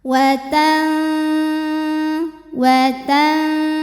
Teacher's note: tidak diun tidak dibunyikan jelas n Bukan watanzi tapi watanzi jadi ujung lidah kita sudah disentuhkan ke makhraj huruf Zai yaitu ke dinding gigi seri bawah sudah mau bilang Z sudah menyentuh tapi tidak perlu ditekan sehingga suara yang keluar nanti samar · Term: dengung